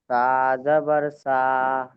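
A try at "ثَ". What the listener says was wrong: ঠিক আছে, তবে আপনি যেই পড়ছেন সা জাবার সা বলে টানছেন, এই আওয়াজটা, এই টানটা দেবেন না। এই টানটা দেওয়া ভুল।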